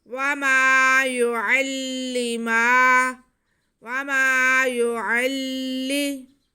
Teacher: या पे पेश, आइन पे ज़बर और लाम मुशद्दद। आइन का ज़बर हम लाम से मिलाएंगे और फिर लाम के नीचे ज़ेर पढ़ेंगे